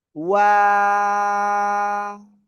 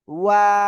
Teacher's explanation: দুই ঠোঁট গোল হবে, শুরুতে গোল হবে, মাঝখানে দুই দিকে প্রসারিত হবে, শেষে এসে আবার গোল হবে। এই অক্ষরে আমরা 3 আলিফ টেনে পড়বো।